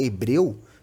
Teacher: a letra h ela não tem pronúncia é uma letra muda